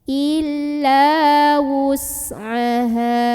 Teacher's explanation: Maka cara membunyikannya, huruf ha ini dipanjangkan 2 harokat saja, berhenti ataupun tidak berhenti 2 harokat saja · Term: mad tabi'i